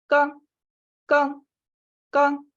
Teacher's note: В тибетском вот буквы первого столбца, там придыхания нет вообще. То есть они его как бы специально убирают немного.